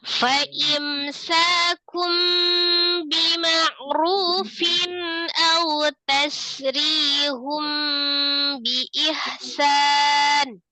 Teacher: mim sukun ketemu dengan sin, hukumnya adalah izhar safawi, dibaca dengan jelas tapi ditawasudkan mimnya